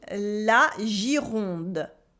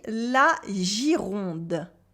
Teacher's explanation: a soft G before the I that makes the sound J, and the French R, gir, and the nasal vowel on, Gironde